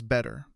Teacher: Americans often turn a T sitting in the middle of a word into a quick, soft D sound. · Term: flap T